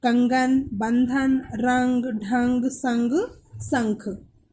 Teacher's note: अनुस्वार का उच्चारण नाक से किया जाता है।